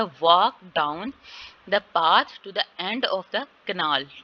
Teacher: यहाँ पे वॉक डाउन दोनों पे स्ट्रेस, पाथ पे स्ट्रेस, एंड पे और कनाल पे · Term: स्ट्रेस्ड वर्ड